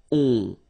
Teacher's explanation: so it's a nasal and it goes in your nose and it goes like on. All right, so you don't hear any N, so it's really on.